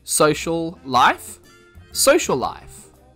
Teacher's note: they are connected and you pronounce that sound a little bit longer. We call this gemination.